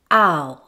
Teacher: Ow is a diphthong, which is a glide from one vowel to another, but within a single syllable. However, with diphthongs ending in U, the full sound is not usually reached, so the sound is not said as a completed U sound. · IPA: /aʊ/, aʊ